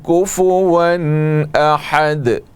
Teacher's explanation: یہ تنوین ہے دو زبر کی, اس کے بعد حروف حلقی میں سے حمزہ ہے, اس لیے یہاں پر اظہار ہوگا, اس کو اظہار حلقی کہتے ہیں.